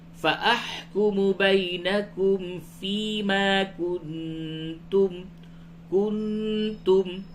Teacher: نون ساکن کے بعد تا ہے، اس جگہ پہ اخفا ہوگا